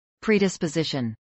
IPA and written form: pɹiːˌdɪspəˈzɪʃən (predisposition)